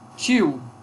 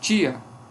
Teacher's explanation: Então eu tenho ditongo decrescente mas em tia eu já tenho um hiato